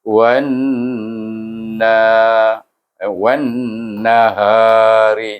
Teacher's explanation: Yang dipanjang iaitu nun bertasydid itu, bukan na. Iaitu wan naha, ha pun ada satu hukum iaitu mad asli sebetul, iaitu dia ha di sana wan naha ha. · Kita ada lagi satu hukum, iaitu wajibul gunnah. Kita baca dengan dengung nun itu dalam 2 harakah.